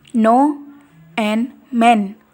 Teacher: Oral passage is blocked by pressing tongue tip against the alveolar ridge or alveolar.